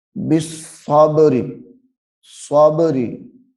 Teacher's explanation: با کو ظاہر کر کے پڑھنا ہے کیونکہ با حروف قلقلہ میں سے ہے اور یہاں پہ ظاہر بھی ہو رہی ہے۔